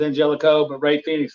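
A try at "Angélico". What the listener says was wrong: It's Angelico. Angelico. You pronounce the G as an H for some reason.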